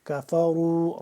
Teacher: را کو پر کر کے پڑھیں گے اور واو کے ساتھ مل رہا ہے واو مدہ اور اس · واو مدہ اور اس کے اوپر ایک یہ مد بھی ہے چھوٹی والی، تو اس کو لمبا کریں گے ہم 2 سے 3 الف کے برابر